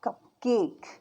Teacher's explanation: The word cup cake, for example, technically has 3 vowels, but this E is silent. It only has 2 syllables because the vowel sounds we hear are the short U and the long A. 2 total vowel sounds.